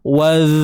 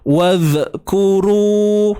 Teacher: huruf zal ni dia bersifat rakhawah. bersifat rakhawah, tuan-tuan dan puan, iaitu mengalirnya suara. Jadi bila kata mengalir ni, waz, suara tu terlepas, dia mengalir je.